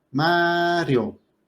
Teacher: la fuerza de la voz está cayendo en la A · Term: palabra grave